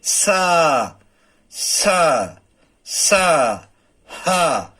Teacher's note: जिनके बोलते समय गर्म हवा मुंह से बाहर निकलती है, ऐसे व्यंजनों को ऊष्म या संघर्षी व्यंजन कहते हैं